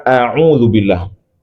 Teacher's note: Hamzah keluar dari pangkal tenggorokan, ya. Sedangkan ain keluar di tengah tenggorokan, a'u. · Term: Huruf hamzah